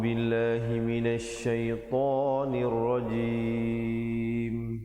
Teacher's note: kita menyempurnakan bunyinya dengan menutup rapat mulutnya barulah sempurna bunyi mim